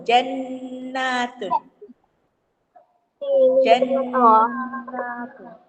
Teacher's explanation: Nun ada syaddah. Jannatun. Dengung 2 harakat. Hukum dia Idgham ma'al gunnah. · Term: Wajib dengung